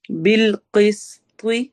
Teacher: قاف موٹا، طوا موٹا پڑھا جائے گا، بیچ میں سین سیٹی والی آواز کے ساتھ ہوگا